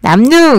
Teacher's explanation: 앞에 있는 미음의 영향을 받아서 뒤에 있는 리을이 니은으로 바뀌었잖아요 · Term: 순행동화